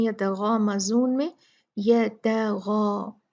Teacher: جب غا پڑھیں گے تو اس کے ساتھ جو الف ہے وہ بھی موٹا پڑھا جائے گا